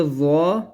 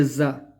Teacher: زا جو ہے وہ ہم نے سختی سے پڑھنا ہوتا ہے، یعنی اوپر والے اور نیچے والے دانتوں کو دبا کر پڑھنا ہے